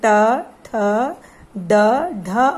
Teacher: इसका प्राणवायु कंठ से निकलकर सीधे मूर्धा से टकराती है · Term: मूर्धन्य व्यंजन